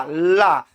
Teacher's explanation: पार्श्विक मतलब यहाँ पर होता है ऐसी व्यंजन ध्वनियां जिनके उच्चारण में वायु जीभ के अगल बगल वाले हिस्से से टकरा के बाहर निकलती है और जीभ का आगे का भाग ऊपर जाके स्थिर हो जाता है